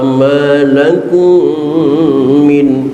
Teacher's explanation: mim mati ketemu mim idgham mutamatsilain